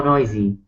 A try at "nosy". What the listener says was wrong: Not noisy. You gotta make sure you're not saying noisy. You gotta make sure you're saying nosy. Not an oi sound like oil. Noisy. Nosy, as in O. Nosy.